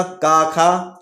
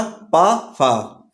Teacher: स्वर तंत्रियों में कंपन नहीं होगा। प्रत्येक स्पर्श यानी कि स्पर्श व्यंजन के प्रत्येक वर्ग का पहला और दूसरा वर्ण, ऊष्म व्यंजन भी शामिल होता है जिसमें हा को छोड़ दिया जाता है। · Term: अघोष